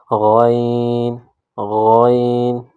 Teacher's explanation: اگلا حرف دیکھیے، غین غین، اس حرف کو بھی حلق سے ادا کریں گے، غین۔ اس حرف کا اور خا کا مخرج ایک ہے، دونوں کو حلق سے ادا کریں گے